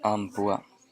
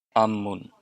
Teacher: So the MP softens to MM.